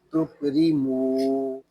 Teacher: میم کو ایک الف تک کھینچ کر پڑھیں گے کیونکہ یہاں پہ واو مدہ ہو رہا ہے۔ واو مدہ اس لیے ہو رہا ہے کہ واو ساکن سے پہلے پیش آ گیا ہے۔